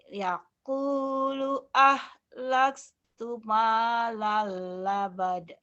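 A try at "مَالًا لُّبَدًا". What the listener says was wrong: Jangan labada, lubada. Lubada, 2 patah madiwan. Ini ada hukum lain. 2 patah dibaca 1 jika dihentikan.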